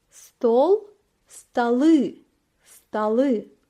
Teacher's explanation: sonra ı harfini ekliyoruz ve stalı stalı elde ediyoruz dikkat ettiyseniz vurgu o harfinden i harfine kaymış Bu yüzden o vurgunun altında olmadığı için a gibi okunuyor